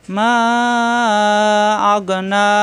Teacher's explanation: এর বাম পাশে লম্বা হামজা আসায় তিন আলিফ টান হবে, মাদে মুনফাসিল।